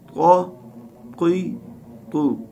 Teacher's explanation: اس کی ادائیگی کے وقت زبان کی نوک ثنائے علیہ کی جڑوں سے لگتی ہے اور ساتھ میں زبان کی پشت جو ہے اوپر کے تالو سے چمٹ جاتی ہے. تو یہ ادا ہوتا ہے، یہ بالکل زیادہ موٹا پڑا جاتا ہے.